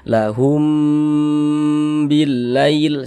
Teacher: Lahum, di bagian humnya kita tahan, kita panjangkan sejenak, kita dengungkan. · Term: didengungkan